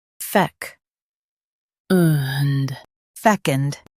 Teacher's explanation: Stress fec and keep und soft. Focus on the k sound.